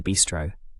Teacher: remember the stress is on the first syllable, bis, not the second